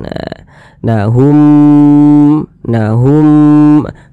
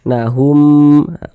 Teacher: humnya itu kita tahan kita panjangkan sepanjang dua harakat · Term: idgham mimi